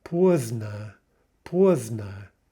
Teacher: The D is dropped out.